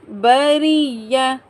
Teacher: را کے نیچے زیر ہے، را کو ہم باریک پڑھیں گے، یا کے ساتھ میں سختی سے ملائیں گے، یا مشدد ہے۔